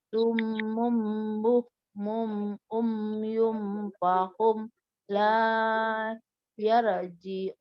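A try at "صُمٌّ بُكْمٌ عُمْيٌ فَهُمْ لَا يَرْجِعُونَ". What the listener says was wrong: Ini tadi berarti 2 kali salah nih. Pertama, di sini mim tasydid wajib dengung. Terus fahum, nggak boleh fahum. Lah, nah itu yang nggak boleh ya.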